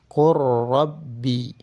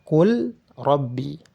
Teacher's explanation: jika ada lam sukun bertemu dengan ra, barulah disebut dengan idgham